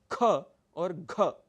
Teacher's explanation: लेकिन दूसरा और चौथा, चूंकि ये दोनों महाप्राण वर्ण हैं, इसलिए आपकी प्राणवायु शक्ति अधिक लगती है। ख और घ, अगर आप इन्हीं वर्णों को अल्प प्राण में बोलने की कोशिश करेंगे तो आपका वर्ण बदल जाएगा।